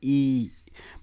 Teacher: ई मुख विवर के आधार पर समृद्ध है। जीभ की स्थिति के आधार पर आपका अग्रभाग है, जीभ के अगले भाग से बोला जाता है। ओठ की स्थिति के हिसाब से अवृत्तमुखी है।